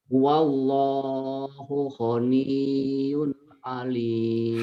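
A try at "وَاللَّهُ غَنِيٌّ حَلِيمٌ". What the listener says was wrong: Halim. Halim kok alim? Halim. Halim Perdana Kusuma bukan alim. Halim. Padahal di depan mata jelas ini hak. Kenapa dibaca alim?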